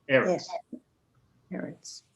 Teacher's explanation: If you have two of those in a row, almost always it's going to be, the emphasis will be on the first syllable of the word.